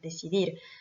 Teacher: c'est forcément la dernière syllabe également, puisqu'on a un mot qui se finit par une consonne